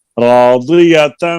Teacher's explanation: मीम मुशद्दद के ऊपर गुन्ना